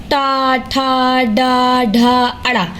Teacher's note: ये जीहा या मूर्धन मतलब जीभ या मूर्धन्य की सहायता से बोले जाते हैं